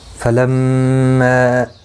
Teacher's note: میم مشدد پر غنہ ہوگا، ما مد منفصل ہے، 3 الف کی مقدار کے برابر کھینچ کر پڑھا جائے گا